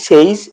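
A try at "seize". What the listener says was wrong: না না সেই, সেই জেড উচ্চারণ হবে না শেষে, সেইজ।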